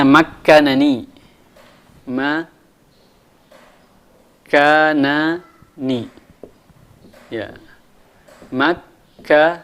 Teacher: Ini mau dijadikan idgham, maka nun yang, karena ada dua nun di sini, maka nun yang pertama kita matikan dulu, baru dimasukkan ke nun setelahnya. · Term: mutamathilaini kabir